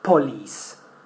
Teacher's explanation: the stress is in the second syllable, lis. And the first one is weak.